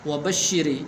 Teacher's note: وبشر یہاں پر جو راہ ہے اس کے نیچے زیر ہے تو اس لیے اس کو باریک کرنا ہے